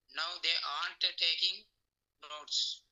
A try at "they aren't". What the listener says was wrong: సార్ మీరు ఆర్ చెప్పేటప్పుడు divide చేస్తున్నారు. They ఆర్, they ఆరెంట్. They aren't.